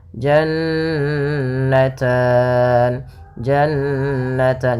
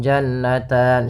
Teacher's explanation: ada Nun berharakat tasdid maka ini kita namakan dengan gunah bacaan gunah yaitu suara nunnya ditahan dua harakat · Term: bacaan gunnah